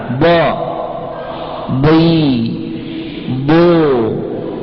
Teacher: itu keluar dari salah satu tepi lidah atau dari kedua-duanya secara bersamaan menempel pada dinding dalam gigi geraham a atas. Singkatnya d ini tepi lidah ke gigi geraham bagian dindingnya yang atas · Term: huruf dhad